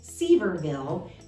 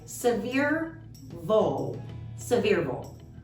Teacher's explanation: with the emphasis on the 2nd syllable, but really fast, and all mashed together